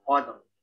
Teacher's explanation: Terus juga rohnya lebih tebal ya, dia tafkhim.